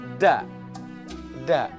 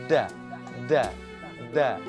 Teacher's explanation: Ujung lidah nempel ke gusi gigi seri atas. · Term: huruf da